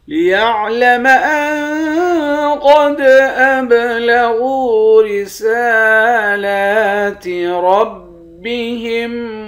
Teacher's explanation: دال اور با یہ دونوں قلقلے والے حرف ہیں۔ غین کو موٹا پڑھیں گے، واو کے ساتھ ملا کر ایک الف کی مقدار کھینچ کر پڑھیں گے۔ سین اور لام ان دونوں پر کھڑا زبر ہے، ایک ایک الف کی مقدار کھینچ کر پڑھیں گے۔ · قاف کو موٹا پڑھیں گے، دال پر قلقلہ کریں گے اور با پر بھی قلقلہ کریں گے۔ دال اور با یہ دونوں قلقلے والے حرف ہیں۔